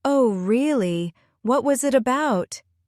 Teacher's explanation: Imagine your tone rising slightly on really. That's how English speakers express curiosity.